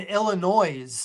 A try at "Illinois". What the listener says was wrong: Are you pronouncing the S?